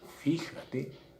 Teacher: La palabra fíjate no es ni aguda, ni es grave o llana, es esdrújula. Lleva acento en la antepenúltima.